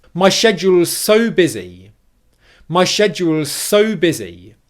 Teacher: This time I'm not going to stress the word schedule. I'm going to stress the word so after it because that's the word that I want to stress in this phrase to convey the meaning that I'm so busy.